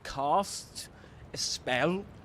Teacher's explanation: with that long a sound, you know, so typical of, you know, received pronunciation or standard Southern British English, these two accents